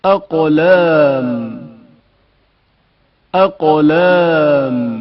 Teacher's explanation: قاف کی آواز شدت کے ساتھ ادا ہوتی ہے اور اچانک منقطع ہو جاتی ہے. اقلام اقلام قاف کے تلفظ کے وقت زبان کی حالت پر توجہ کریں.